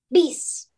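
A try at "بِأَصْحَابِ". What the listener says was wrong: No. Not Bees. We are not connecting Ba with the Sod. Because next to Ba is a Hamza with the Zabr sign. So we are going to connect Hamza with the Saad, not Ba with the Saad.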